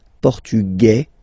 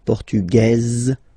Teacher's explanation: it will be only in this z sound the difference between the masculine form and The Feminine form okay masculine portug you don't pronounce the S feminine form portuges · Masculine, portugais, you don't pronounce the S. Feminine form, portugaise, you pronounce this Z sound